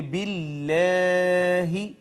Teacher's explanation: اس میں جلالت کا ما قبل اگر مکسور ہو تو ہم نے کئی دفعہ پڑھا کہ اس کو ہم باریک کر کے مرقق کر کے پڑھیں گے